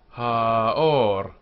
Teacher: the third, or, has the accent and it's closed with a r